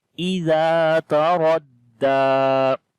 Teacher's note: Ra we read in heavy sound and dal we read in light sound.